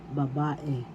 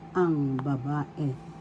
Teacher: First syllable ba, second syllable ba, third syllable babae. The second syllable has the accent